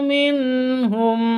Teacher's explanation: nun sukun bertemu dengan ha nun mati bertemu dengan ha bacanya jelas harus jelas tidak didengungkan tidak disamarkan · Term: izhar halqi